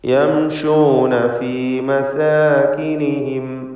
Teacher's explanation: യംശൂൻ എന്നതിൽ സാക്കിനത്ത മീമിനെ മണിക്കാതെ ഇൽഹാർ ഷഫവി നൽകി വെളിവാക്കണം.